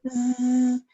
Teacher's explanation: this one also vibrates, but it's somewhere on the tip of the tongue. Zzz in the back and zzz in the front.